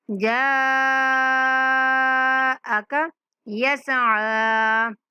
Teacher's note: جا کی جو مد ہے 5 سیکنڈ تک کھینچیں گے، حمزہ اور کاف کو نہیں کھینچیں گے